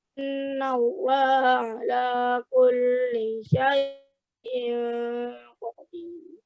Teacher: Kurang ditahan, ikhfa hakikinya dengung